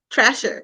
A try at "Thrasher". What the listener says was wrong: T-H. Don't say trash.